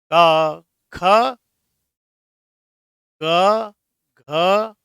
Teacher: इनका उच्चारण स्थान कंठ है। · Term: कंठ ध्वनियां